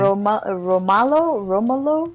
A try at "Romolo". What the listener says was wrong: Romolo. Yeah, emphasis on the O. Romolo.